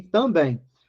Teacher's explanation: E também termina com em, a sílaba tônica é a última, palavra oxítona.